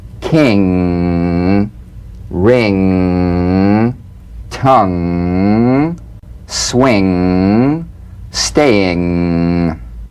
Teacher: The NG is a voiced, tongue-backed, soft palate nasal consonant. So sing with the back of the tongue in contact with the soft palate.